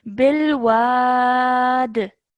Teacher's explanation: stretch the wa sound out for about however long you can, and then end on a jerk sound with a dal. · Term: qalqala